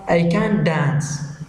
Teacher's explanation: can't finishes with sound T, but when it is placed next a word beginning with D, the T sound is totally omitted. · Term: elision